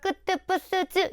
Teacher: 잔뜩 긴장해서 경직되는 소리입니다. 그게 뭐냐면 목청이 긴장한 상태에서 나오는 소리예요. 그래서 끄뜻 뿌스 이런 거 지금 발음해 보면 알겠지만 목청 긴장됩니다. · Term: 된소리